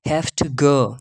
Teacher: This is called assimilation. Okay, where the v sound assimilates to a voiceless sound, f sound